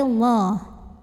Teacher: secara tebal pangkal lidah kita terangkat dibunyikan secara tafkhim Kenapa karena huruf sebelumnya mim berbaris di atas jadi cara bacanya ditebalkan pangkal lidah dinaikkan